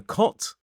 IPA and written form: kɒt (cot)